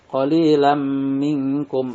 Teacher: nun mati bertemu huruf kaf di sini dinamakan ikhfa, yakni dibacanya samar antara idgham idhar dan idgham dan ditahan 2 harokat atau didengungkan.